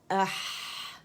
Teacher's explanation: تو جب ہم اس سے کہتے ہیں نا اح, تو آواز چلتی بھی فیل ہوتی ہے, ٹھیک ہے. اور زبان کی جڑ کو نیچے کرتے ہیں تو آواز رگڑتے ہوئے جاتی ہے, ٹھیک ہے, اور پھر ظاہر ہوتی ہے, ٹھیک ہے.